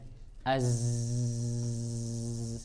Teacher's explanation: Dia nggak ada nafas, nggak ada nafas, tapi ada suara. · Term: majhurah rikhwah